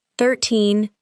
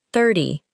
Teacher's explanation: In 13, the final part is usually stronger. In 30, the first part is usually stronger. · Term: The stress is different